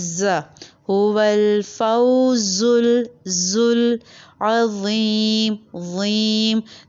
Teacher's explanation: ज में आपके पास बजर साउंड आएगा ज फल जुल जुबान ऊपर के दांतो को टच करेगी लेकिन